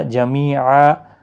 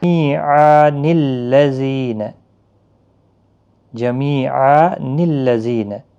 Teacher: وقف کی صورت میں یہ نون قطنی نہیں پڑھا جائے گا